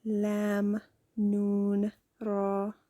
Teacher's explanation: They originate when the tip of the tongue touches the upper hard palate. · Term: liquids